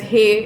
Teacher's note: the pronoun they is pronounced as hey in the shikarpuri dialect